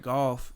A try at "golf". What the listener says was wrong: You know there's an L in there? It's golf, not goof.